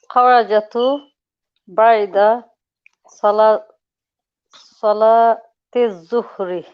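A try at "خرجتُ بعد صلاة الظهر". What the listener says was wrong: So we know, sisters, that when we add a pronoun on the end of a verb, the letter before it takes a sukoon. So it's not kharajatu, not kharajatu, it's kharajtu with a sukoon.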